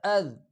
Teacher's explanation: حمزہ ذال زبر اذ۔ ذال زبان کی نوک معمولی سی دانتوں کے درمیان نکال کے نرمی کے ساتھ ادا کر لیا کرے۔